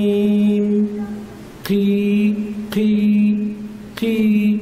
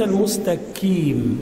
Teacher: القاف قريبه جدا من الكاف في المخرج وعند الكسر يشتبه الحرف